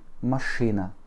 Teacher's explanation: Pour écrire machina, qui veut dire une voiture, M, A, Ch, I, N, A. L'accent tonique tombe sur le I.